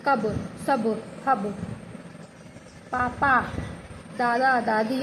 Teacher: बिना नाक के जो बोलते हैं उसको कहते हैं निरनुनासिक